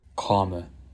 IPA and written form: kɑmə (COMMA)